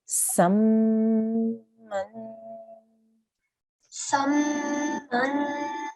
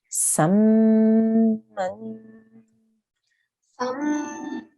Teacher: So we have a prolonged nasal sound there.